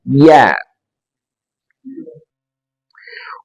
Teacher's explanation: tengah lidah ditekan ke langit-langit di atasnya. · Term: huruf ya